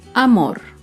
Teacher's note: Amor se acentúa en la última sílaba, pero no lleva tilde porque no termina ni en vocal ni en las consonantes N o S. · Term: palabra aguda